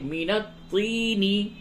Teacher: طا کو پر کر کے پڑھیے